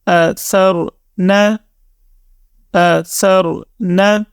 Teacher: را کے اوپر جزم ہے، ٹھیک ہے، اس سے پہلے زبر ہے، تو را کو ہم نے موٹی آواز کے ساتھ پڑھنا ہے